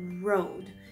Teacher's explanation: You're making the R sound with your lips